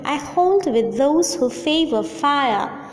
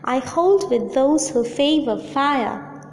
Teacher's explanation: Unstressed, stressed, unstressed, stressed, unstressed, stressed, unstressed, stressed. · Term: iambic tetrameter